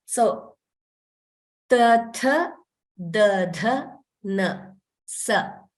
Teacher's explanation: The tongue is approaching the teeth in the upper jaw. So sa, similar movement of the tongue, but it doesn't touch.